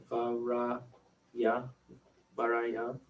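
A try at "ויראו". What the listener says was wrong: No, you're adding a yut in there.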